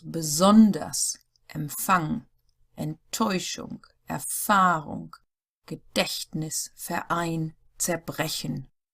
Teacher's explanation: The stress is on the second syllable, for example, after words beginning with B, Emp, Ent, Er, G, Ver, Zer.